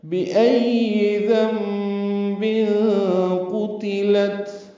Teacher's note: اور جب زندہ گاڑی جانے والی بچی سے پوچھا جائے گا، بِأَيِّ ذَنبٍ قُتِلَتْ، با کو جلدی اور معروف پڑھیں گے، ای میں حمزہ کو یا سے ملانا ہے اور یہ بھی جلدی پڑھنا ہے۔ ذنب میں نون ساکن کے بعد با آنے کی وجہ سے اقلاب ہو رہا ہے، نون کی جگہ میم پڑھیں گے۔ بن میں اخفا ہے، تنوین کے بعد قاف آنے کی وجہ سے ذنب قتلت، قاف اور تا، قاف پر پڑھیں گے اور تا کی زیر کو معروف طریقے سے جلدی پڑھیں گے، قاف کی پیش بھی معروف پڑھیں گے۔